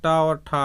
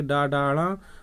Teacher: अघोष टा अघोष होता है, टा और ठा अघोष हैं, फिर आगे की डाड़ा वो सघोष हैं।